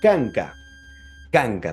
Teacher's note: En otras palabras, estamos hablando de que el punto de articulación sería velar. Se encontraría en el velo del paladar. Ahí se va a pronunciar la consonante K.